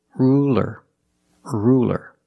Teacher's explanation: It's a light L because it's between vowels.